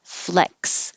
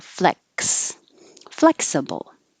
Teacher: but it sounds like a k and an s flex so you have to put your tongue in the k position and stop the airflow